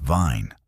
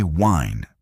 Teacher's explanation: For V, your top teeth gently touch your lower lip. For W, your lips round forward like you're about to blow air.